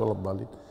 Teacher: هو ليس لأن هذا يرى حركتين وهذا يرى أربع، لا، هما يرى، لكن الحركة عنده بطيئة وهذا الحركة عنده سريعة. يعني الحين لما أقول ولا الضالين، ست حركات